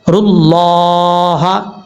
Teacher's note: کھڑا زبر کا مطلب ایک الف کی مقدار اس کو لمبا کر کے پڑھیں گے, اور لفظ اللہ سے پہلے را کے اوپر پیش ہے, لفظ اللہ پر پڑھا جائے گا.